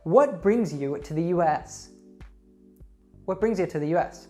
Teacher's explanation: Notice that I emphasized what, bring, and US.